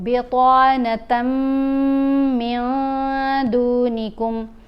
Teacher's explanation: تا کو میم سے ملا کر غنہ کرتے ہوئے پڑھیں گے, نون کے اوپر اخفا کریں گے.